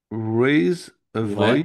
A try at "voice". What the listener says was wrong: Ouais. Non, pas voy.